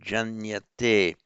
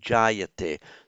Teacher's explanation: slightly anomalously in this verb, the nasal drops out and the vowel is lengthened, so jayate.